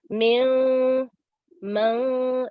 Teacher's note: Ikhfa, we applied 2-second nasal sounds